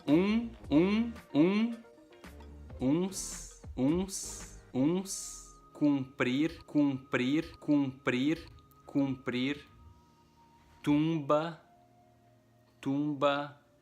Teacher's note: The vowel U a letra U makes a UN and a UM sound. So it's a pretty nasal one too.